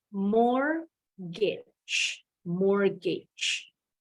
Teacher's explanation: Huruf T-nya silent. Bacanya bukan mortgage. Jadi nggak kedengeran ya T-nya.